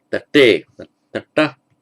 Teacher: Bit difficult to pronounce with a dental followed by a retro